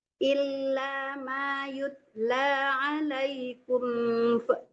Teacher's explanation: Alaikum, kumnya tidak dengung ya, jangan lama tertahan di situ.